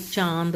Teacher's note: अनुनासिक वो होता है जिन वर्णों के उच्चारण में जो है हवा नाक और मुंह दोनों से निकलती है उसे हम अनुनासिक कहते हैं